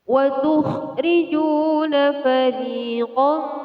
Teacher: Huruf waw yang didahului dengan harokat dhammah. Jadi ju di sini dibaca panjang, dan panjang mad tabi'i adalah 1 alif 2 harokat.